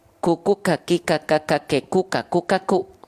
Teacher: jadi kan hams itu sebenarnya artinya adalah mengalir nafas ya tapi untuk huruf Kaf itu dilafalkan hanya berupa percikan nafas saja